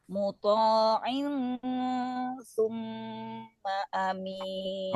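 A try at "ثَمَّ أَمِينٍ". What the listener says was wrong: Awas. Bukan summa, sama.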